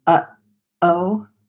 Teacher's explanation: one of the only times in English that we use what's called a glottal stop is during the word uh-oh. So you'll hear kind of like that pop, the uh-oh right there.